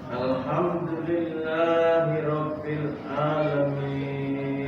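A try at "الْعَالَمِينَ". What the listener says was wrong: Nah, bedakan yang alhamdulillah dan alamin. Alaminnya ditambah sedikit, agak ke dalam. Alhamdulillahi rabbil bukan alamin, alamin.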